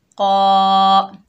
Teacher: वाइज़, क़ाफ के ऊपर ज़बर है, आगे अलिफ खाली है, ये अलिफ मद्दा है, इसको एक अलिफ की मिक़दार खींच कर पढ़ेंगे। क़ाफ जो है हरूफ मुस्ताला में से है तो मोटा पढ़ेंगे